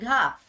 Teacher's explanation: कंठे महाप्राण घोष व्यंजन वर्ण